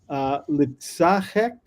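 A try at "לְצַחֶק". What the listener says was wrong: That's the accent's been moved back. It's normally litzachek.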